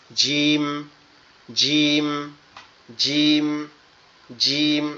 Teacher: জিম হচ্ছে আমাদের জিহ্বার মধ্যকান উপরের তালুর সঙ্গে লাগবে